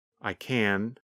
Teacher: When we say the positive form, we pronounce the letter N longer. The N sound, n, n, n, lasts longer than in the negative form.